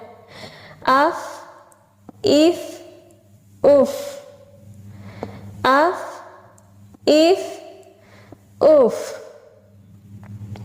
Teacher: اور فا اوپر والے سامنے کے دانت ان کا کنارہ یعنی ثنایا علیہ کا کنارہ جب نیچے والے ہونٹ کے تر حصہ سے ملتا ہے تو فا ادا ہوتا ہے